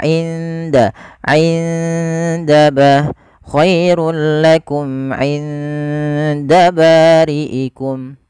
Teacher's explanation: Anda bacaan ikhfa pada lafal nun sukunnya. Nun sukun ketemu dengan huruf dal itu harus disamarkan kepada makhraj daripada huruf dal. Dal hurufnya, makhrajnya adalah ujung lidah kita bertemu dengan pangkal antara gigi seri atas dan gusi atas, sehingga dia di belakang keduanya.